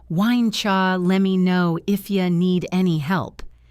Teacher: Why don't you becomes why don'tcha or why and cha. Let me becomes lemme. If you becomes if ya.